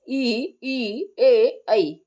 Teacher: अग्र स्वर है जीवा के अगले भाग से ये बोले जाते